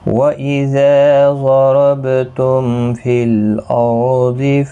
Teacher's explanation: وَإِذَا اِذَا الف مدہ ہے، ایک الف کی مقدار کے برابر کھینچیں کہ ضاد حروف مستعلیہ ہے، را بھی پر پڑا جائے گا، ضاد بھی، با ساکن پر قلقلہ ہوگا، میم کے بعد فا آیا ہے، میم ساکن کے بعد تو یہاں پر اظہار شفوی ہوگا، غنہ نہیں ہوگا